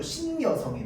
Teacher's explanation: 지금 니은 첨가 현상. 자, 그래서 원래 없던 소리 니은이 추가되는 걸 니은 첨가 현상이라고 합니다.